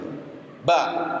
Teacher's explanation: kalau huruf ba itu sifatnya tidak keluar nafas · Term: jahr